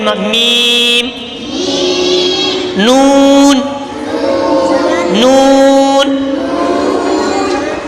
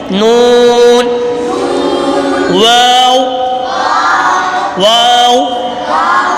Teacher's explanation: वाओ दोनों होठों की गोलाई से अदा होता है।